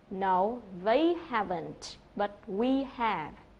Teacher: người ta trả lời thì người ta lại nhấn vào cái từ they và từ we